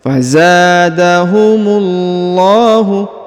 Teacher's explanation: huruf mu langsung sambung masuk ke huruf lam pada lafzul jalalah yang bertasdid, lalu kemudian dipanjangkan 2 harokat karena di atasnya terdapat alif kecil.